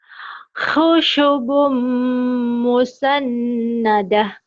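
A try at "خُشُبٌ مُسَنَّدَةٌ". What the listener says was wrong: Ya, bagus. Pintar sekarang ya.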